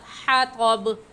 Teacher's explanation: حا حلق کے درمیان سے نکال کر پڑھیں گے